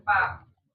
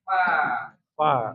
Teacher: Gigi seri atas menyentuh bibir yang basah. Bibir bawah ya. · bibir di bawah menyentuh ujung gigi seri depan atas. Gigi seri atas menyentuh bibir yang basah.